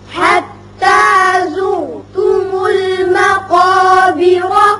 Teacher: بیرا یہاں را کے اوپر جب زبر پڑیں گے اور کلہ کے ساتھ ملائیں گے تو را پر ہوگا، لیکن جب وقت کریں گے تو را ساکن ہونے کی صورت میں پیچھے چونکہ زیر ہے اس لیے باریک ہوگا